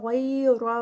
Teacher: غیر غین ہیوی، را ہیوی